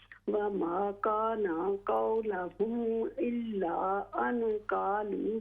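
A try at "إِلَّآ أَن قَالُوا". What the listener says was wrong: इल्ला मद को लंबा करें, इल्ला अन क़ालू,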